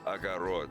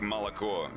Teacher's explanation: The last O is the stressed one.